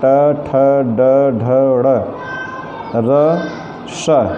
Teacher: इन वर्णों को बोलते समय जिह्वा मूर्धा नामक स्थान की ओर प्रयत्नशील होती है।